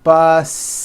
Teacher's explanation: The last sound you hear is that voiced Z.